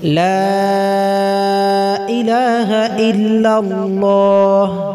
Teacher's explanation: মাদের স্থলে মাদ না করে হারকাত পড়া, যেমন লা ইলাহা ইল্লাল্লাহ, এখানে লায় মাদ আছে, 3 আলিফ পরিমাণ টান মাদে মুনফাসিল।